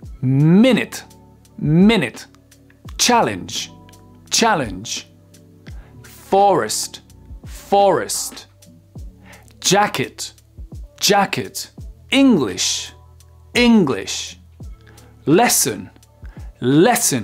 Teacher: donc on sent bien que c'est sur la première syllabe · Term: l'accent tonique, accent tonique